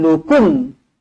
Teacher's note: hukum dia izhar syafawi jadi izhar dibaca jelas dan terang